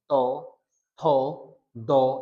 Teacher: কিংবা ত যদি উচ্চারণ করি আমরা, ত উচ্চারণ করলে আমরা দেখব যে ত উপরে দাঁতের গোড়ায় লাগবে। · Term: দন্ত, দন্ত বর্গ